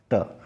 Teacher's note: जो ट है वह मूर्धन्य भी है,